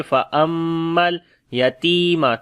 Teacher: میم کے اوپر شد ہے، غنہ کریں گے اور لام کے ساتھ ملائیں گے